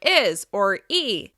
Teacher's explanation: When we're speaking quickly, we may actually drop or delete sounds, like when the sound on doing and playing becomes doin' and playin'. We might drop the H sound from his or he, and it'll sound like is or e.